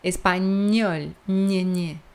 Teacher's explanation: Vai a metade da língua, ela dá um toque no paladar.